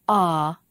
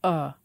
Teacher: they're both relaxed central vowels but the jaw is lower in one than in the other